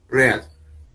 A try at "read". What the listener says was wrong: Ok, así como usted me lo está pronunciando en estos momentos, es el pasado de read. Read. The pronunciation is read.